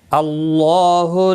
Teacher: اللہ کا لام زبر کی وجہ سے پر پڑا جائے گا۔ اس کے اوپر کھڑی زبر بھی ہے، ایک الف کے برابر کھینچ کر پڑھیں گے۔ · اس کے اوپر کھڑی زبر بھی ہے، ایک الف کے برابر کھینچ کر پڑھیں گے۔ لا مد منفصل ہے، 3 الف کے برابر کھینچ کر پڑھیں گے۔ لام کے اوپر کھڑی زبر ہے، 1 الف کے برابر کھینچ کر پڑھیں گے۔